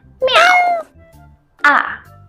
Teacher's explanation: the fourth tone is a falling tone or angry tone.